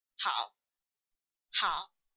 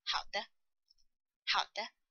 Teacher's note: First is the falling part, then the rising part, like how, how. And the half third tone means we only finish the falling part